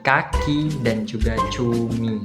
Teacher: I yang berada di bagian lidah, bagiannya itu berada di bagian tinggi, sedikit ke atas dan condong ke depan. Nah, pada saat pengucapannya itu dia pada sedikit hampir menuju pada bagian tertutup, tapi tidak sepenuhnya tertutup seperti itu. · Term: vokal I